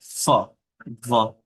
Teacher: নিচের ঠোঁট উপরের দাঁতের সাথে লাগিয়ে উচ্চারণ করেন, যেমন ফ, ভ।